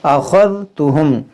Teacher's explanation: यहाँ पर देखें मीम में गुन्ना करेंगे, सुम्मा अख़ज़्तुहुम, ये ख़ा हुरूफ़ मुश्तालिया मोटा करेंगे, दाल को नरमी से